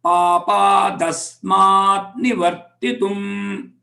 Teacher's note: the ta sound becomes da